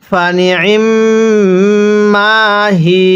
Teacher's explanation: এখানে ওয়াকফের কারণে ইয়ায়ের উপর জবরটিকে বাদ দিব।